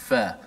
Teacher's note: Fa makhrajnya di bibir kita. Gigi kacip menekan perut bibir. Batnus syafah. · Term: makhraj fa